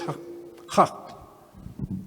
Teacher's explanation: ja, saliendo de la garganta. Guntural.